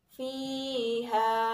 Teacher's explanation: Cara membacanya yaitu harus dipanjangkan 1 alif atau 2 harokat. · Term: Mat tabi'i